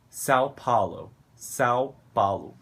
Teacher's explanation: Os vogais são muito abertos assim.